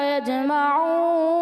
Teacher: یجمعون جو آپ نے وقف پڑھا، لہجہ بہت اچھا تھا وقف میں، لیکن بیٹا اس میں ناک میں آواز لے گئے آپ